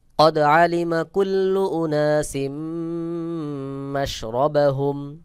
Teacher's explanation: তানভীনের পরে মিম ইদগামের হরফ এক জের উচ্চারণ করে মিম কে মিলায় পড়তে হবে